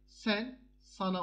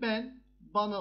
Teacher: Bakın buradaki e'ler a'ya dönüşmüş. Ünlü değişmesi e, a'ya dönüştüğüne göre ünlüler değişmiş. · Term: kökte ünlü değişimi